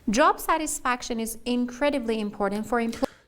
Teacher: we have stress on incredibly incredibly is an intensifying adverb